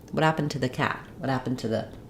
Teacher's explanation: in order to be able to say what happened to the quickly and fluently I have to link and reduce it